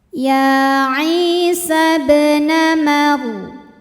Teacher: ba-nya dipantulkan dengan pantulan yang kecil. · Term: qalqalah sughra